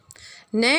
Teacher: न का उच्चारण स्थान है दंत प्लस नासिका।